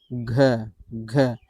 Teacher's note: घ को कहने से भी क्या फील हो रहा है? कंपन फील हो रहा है। वाइब्रेशन फील हो रहा है। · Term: सघोष वर्ण